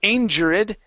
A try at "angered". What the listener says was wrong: you don't want to pronounce the E you're saying angered that's incorrect